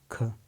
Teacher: स्पर्श व्यंजन कंठ ध्वनि अघोष और महाप्राण ध्वनि है